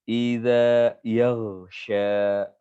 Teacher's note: Idza jangan terlalu tegas. Kalau terlalu tegas nanti jadi zai. Iza keliru.